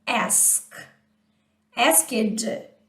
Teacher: termina com um som não vozeado, voiceless sound, o ed, ele vai ter o som de t